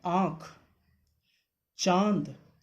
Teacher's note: अनुनासिक की स्वर ध्वनियाँ नाक और मुंह के अंदर से दबाव से निकलती हैं